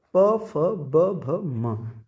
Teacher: अगला वर्ग जो है प फ ब भ म, इन्हें ओष्ठ, इनके जो उच्चारण स्थान है वो ओष्ठ है, यानी प फ ब भ म का उच्चारण होठों के आपस में मिलने से ही होगा। आप बगैर होठ मिलाए प फ ब भ म नहीं बोल सकते, आप कोशिश करके देख सकते हैं।